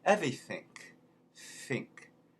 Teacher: Okay, another example is a TH that is in the middle of a word like everything, thing, becomes everything. And the NG at the end becomes a K.